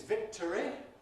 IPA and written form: ˈvɪktəri (victory)